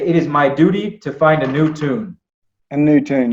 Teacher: when you have the D and the Y, you're making almost like a J.